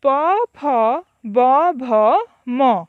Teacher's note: एगुड़िकर उच्चारण स्थान दुई ओठ, तेणु एगुड़िक कुहा जाए ओष्ठ्य वर्ग